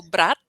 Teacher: Então, aqui está escrito a palavra irmão, ó, brat, brat. Quando eu falo brat, é um encosto com pontinha de língua nos dentes de cima.